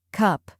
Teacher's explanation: The U in cup is short and centered.